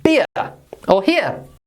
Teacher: we have the short I followed by the schwa sound.